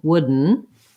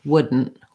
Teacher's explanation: We do the same thing we do for wooden, but we make the N really short. So in this case, stopped D, longer N, wooden. In this case, stop D, shorter N because we have a stop T, wouldn't.